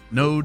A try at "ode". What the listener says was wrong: It's an ode. I said node. I put an N on like like a lymph node.